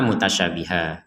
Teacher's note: Kalau kita berhenti di mutasyabihah ya, maka kita membacanya mutasyabihah menjadi 1 harokat, bukan 2 harokat.